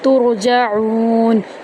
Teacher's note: تا کو را کے اندر داخل کریں گے اور را کو پر کریں گے